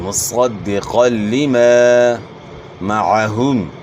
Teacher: صاد کو موٹا پڑھنا ہے اور اس طرح قاف بھی موٹے حروف میں سے، ان کو آپ نے موٹا ادا کرنا ہے، جو حروف مستعلیہ میں سے جو ہمیشہ موٹے پڑ جاتے ہیں۔